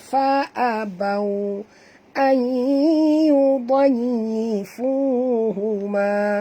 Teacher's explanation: Nun mati bertemu ya, masukkan bunyi nun ini terus ke dalam ya tanpa ada sekatan. Maknanya masuk penuh 100%.